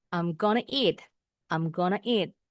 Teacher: Nah, I'm going to eat. Kalau going to bacanya dalam percakapan sehari-hari jadi guna.